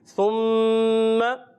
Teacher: सा को अच्छे तरीके से अदा करके मीम मुशद्दद तशदीद वाला एक अलिफ का गुन्ना अदा करेंगे।